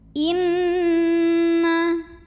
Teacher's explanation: karena Nun bertasydid maka cara membaca Nun nya didengungkan jadi bagaimana cara menemukannya bunyi n ditahan sampai ada getaran halus ke hidung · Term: ghunnah musyaddadah